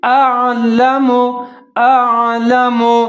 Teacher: ایک دفعہ باریک آواز پڑھنا ہے، جھٹکے کے ساتھ پڑھنا ہے، دوسری دفعہ جو عین ہے اس کو موٹا پڑھنا ہے، جیسے اعلم اعلم ما لا تعلمون.